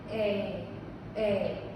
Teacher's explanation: So it's just like our long vowel A without that Y at the end.